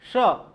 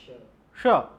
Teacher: च जैसे जहां से हम बोलते हैं च छ ज झ य, वहीं पर बोलो आप श, जिह्वा वहां पर स्पर्श करो